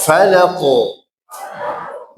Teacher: Jadi memang yang kuat, yang benar qofnya ini dia tebal tidak condong ke dumah. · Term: qalqalah